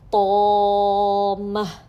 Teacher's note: الف کے ساتھ پڑھیں گے تو بہت زیادہ تفخیم کا جو درجہ اول ہے وہی سنائی دیتا ہے